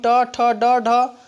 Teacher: जब हम ट, ठ, ड, ढ पढ़ेंगे तो हमारी जिह्वा मूर्धन्य को स्पर्श करेगी, इसका उच्चारण स्थान मूर्धन्य होता है।